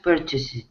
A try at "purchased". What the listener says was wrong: Purchased. With a T.